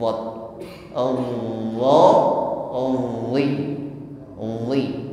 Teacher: pangkal lidah naik terangkat ke langit-langit mulut ketika mengucapkan huruf d